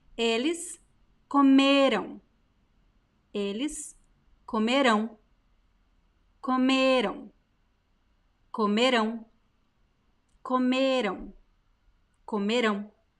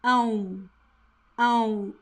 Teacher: Pay attention to the pronunciation of AM. There is no M sound.